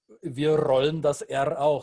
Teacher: So we roll it, we trill it at the tip of our tongue, and that is usually a dead giveaway. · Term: rolling R's